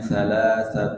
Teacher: salatun bertemu dengan ra maka dibacanya salat masuk ke dalam huruf ra